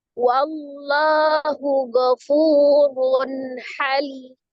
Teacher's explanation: fu-nya adalah mad tabi'i waw, ada waw sukun sebelumnya dhamma di huruf fa. Fu dibaca 2 harakat. · Itu ada kembali lafaz Allah. Wallahu dibaca dengan tebal atau tafkhim karena sebelum lafaz jalalahnya ada huruf yang berharokat fathah. · Fu dibaca 2 harakat. Run ha tanwin ketemu dengan huruf ha ya. Hukumnya adalah izhar